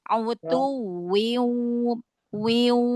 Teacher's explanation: wi-nya jangan masuk ke hidung dulu. Autuwiu, wiu, baru yang idgham bi gunanya masuk ke hidung.